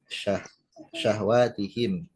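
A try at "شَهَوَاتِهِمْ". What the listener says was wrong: Syahawah hanya fathah. Syahawatihi.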